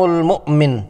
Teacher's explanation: المؤمن میں حمزہ مجزوم کو جھٹکے سے پڑھنا ہے